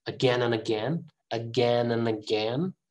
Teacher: and is usually pronounced an